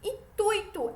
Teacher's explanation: a pronúncia de intuito é intuito, com a tônica no U, do ditongo ui